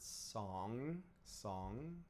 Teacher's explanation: the back of the tongue closing where the uvula is hanging down and the soft pallet, those close back there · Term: ng sound